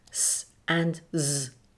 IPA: s and z